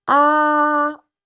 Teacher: Ah is the second tone. We also call it rising tone. You're gonna raise the pitch a little bit.